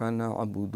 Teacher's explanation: عین کے ساتھ نعبد، حمزہ نہیں پڑھنا